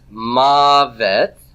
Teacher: where is my stress on mavet? It's on the first syllable. Okay? So if I were going to do a syllable division here, this would be the tonic syllable, right?